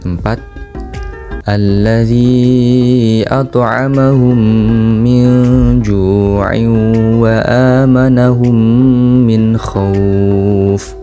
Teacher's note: karena terdapat nun mati bertemu huruf Jim dan harus dibaca dengung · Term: ikhfa Hakiki